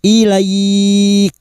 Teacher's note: Bertemunya fathah dengan ya sukun dan diikuti huruf hidup yang dibaca waqaf. Mad layin empat harakat. Kita panjangkan sambil kita lunakkan.